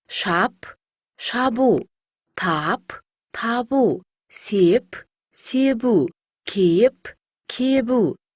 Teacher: П дыбысына аяқталған сөздерге У дыбысы жалғанса, П дыбысы Б дыбысына айналады.